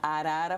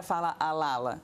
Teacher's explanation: Assim como o rotacismo, que é quando a pessoa não consegue falar o R vibrante. Em vez de falar arara, fala alala.